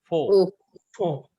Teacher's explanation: there is no dagesh in pe, so it is not p but f